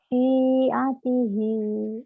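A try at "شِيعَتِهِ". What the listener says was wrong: Shin. Syi'atihi.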